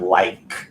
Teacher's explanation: there's no vibration there on the end of like